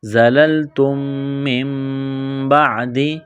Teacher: یہاں نون ساکن کے بعد با ہے تو یہاں پر اقلاب کریں گے، آواز ناک میں چھپائیں گے